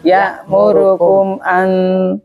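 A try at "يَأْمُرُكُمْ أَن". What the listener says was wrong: Ya, suaranya itu jangan diputus saja pokoknya.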